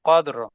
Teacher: हाँ, रा जी साकिन, वक़फ़। जब वक़फ़ करेंगे तो फिर रा को पुर पढ़ेंगे, मोटा पढ़ेंगे।